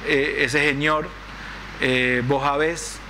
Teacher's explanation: la aspiración de la s cuando dicen ese señor